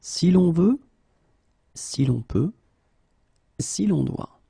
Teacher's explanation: you should definitely add this L between the two just to get this form si long